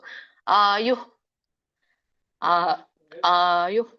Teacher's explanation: ವಿಸರ್ಗ ಇರೋದ್ರಿಂದ ಪ್ರಶ್ವಾಸ ಬಿಡಬೇಕು ಅಂದ್ರೆ ಹು ಹು ಅಂದ್ರೆ ಗಂಟಲಿಂದ ಗಾಳಿ ಬಿಡ್ತೀವಲ್ಲ